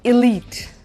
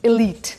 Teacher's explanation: E और I के बीच का साउंड है शुरू वाला, एलीट। So that's an एलीट group of people, powerful, rich, influential.